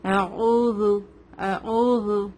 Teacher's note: زال میں buzzing sound نہیں آتا ہے